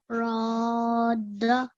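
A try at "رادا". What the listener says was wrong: It needs to be a little bit longer. So remember, if you're reciting this, you need to be counting on your fingers 4 seconds. So now when I'm saying the alif, I'm counting 4 on my fingers. Roda.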